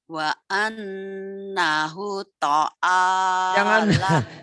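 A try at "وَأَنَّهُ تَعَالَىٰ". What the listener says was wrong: Jangan ta'ala. Ta'ala tuh ta'ala. Kenapa jadi to? Jadi huruf Sunda bukan huruf Jawa. Jangan ta'ala. Ta'ala.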